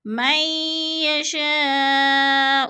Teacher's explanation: ادھر ادغام ہو رہا ہے، نون ساکن کے بعد یا مشدد ہے تو ادغام